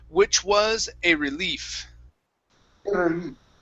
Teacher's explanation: So instead of saying, which was a relief, rolling the R, okay, push your tongue down on that R